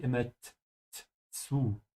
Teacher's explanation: in German the Z sound has a T in it